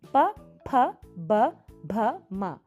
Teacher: ಇದನ್ನು ಉಚ್ಚರಿಸಬೇಕಾದ್ರೆ, ಈ ಅಕ್ಷರಗಳನ್ನು ಉಚ್ಚರಿಸಬೇಕಾದ್ರೆ 2 ತುಟಿಗಳು ಸೇರುತ್ತೆ